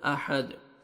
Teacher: احد، ہا پڑھیں گے تاکہ ہا میں ساؤنڈ مکس نہ ہو، دال جب سٹاپ کریں گے دال ساکن ہو جائے گا اور حروف قلقلہ میں سے دال ڈبل ساؤنڈ آئے گا